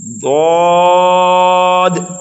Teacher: حرف ضاد کو ہمیں موٹا کر کے پڑھنا ہے اور تھوڑا نرمی سے پڑھنا ہے